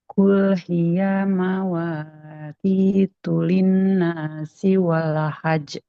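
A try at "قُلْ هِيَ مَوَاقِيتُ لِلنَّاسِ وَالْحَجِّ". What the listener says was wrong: Nah, hiyanya masih panjang. Ingat hia fathah nggak bertemu dengan alif, nggak boleh panjang. panjangnya kulhia. Nah, itu kan panjangnya jadinya.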